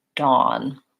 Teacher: your lips are somewhat rounded and you want to try to avoid having the open ah sound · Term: caught law vowel